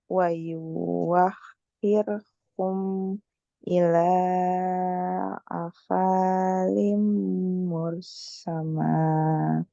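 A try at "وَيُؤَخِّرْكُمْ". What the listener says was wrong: Ini yang wayuwa, wawunya nggak dibaca tapi hamzahnya yang di atas wawu yang dibaca. Jadi wayu akhir. Coba wayu akhirkum.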